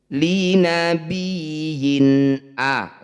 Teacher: Bunyi kasrah tanwin harus dibaca dengan jelas. Tidak perlu ditahan, tidak perlu dinasalisasi di sini. · Kasroh tanwin bertemu hamzah, ini disebut bacaan izhar halki. Bunyi kasroh tanwinnya baca dengan jelas, tidak usah ditahan, tidak usah didengungkan di sini. Li nabiyyin a, langsung masuk ke a. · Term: izhar halqi